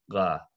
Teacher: it's voiced like g but farther back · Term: voiced q